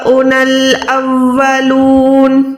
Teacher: नून जबर पे हम रुक रहे हैं तो ये नून साकिन हो जाएगा